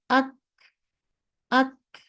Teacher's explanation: কাফে হালকা করে দিয়ে ছাড়িয়ে দিবেন, জাস্ট অডিবল হবে যে আচ্ছা একটা বাতাস ছিল